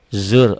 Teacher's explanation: rohnya tebal karena sebelumnya baris di atas